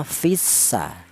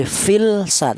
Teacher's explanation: cara bacanya lamnya tidak kelihatan, langsung menyatu ke huruf sin, itu namanya idgham.